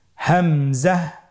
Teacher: একই জায়গা থেকে আমরা হামজা হরফটি উচ্চারণ করব হলকের শুরু হতে